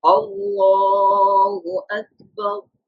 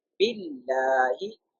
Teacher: Zabar or Pesh before the Allah's name, the Lam of Allah's name should pronounce in a thicker voice.